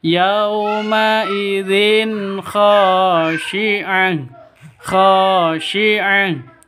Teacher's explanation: bacaan izhar halq jelas terang tidak boleh didengungkan · Kha panjang 2 ketukan karena ada alif diawali dengan fathah. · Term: Mad asli